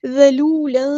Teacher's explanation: ذال کو باریک ادا کرنا ہے، نرمی سے ادا کرنا ہے، یہ ذال ہے، زا نہیں ہے. واو مد آ گیا تو مد اصلی کریں گے.